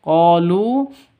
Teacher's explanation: Qolu qo panjang dua ketukan karena ada alif lam alif diawali dengan fathah qo mad asli atau mad thabi'i. Qolu lu sama dua ketukan juga karena ada wau mati diawali dengan dommah